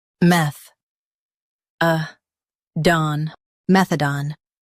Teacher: Emphasize meth and keep done clear.